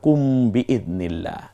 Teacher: মিম সাকিনের পরে যদি বা আসে তখন গুন্না করে পড়তে হয়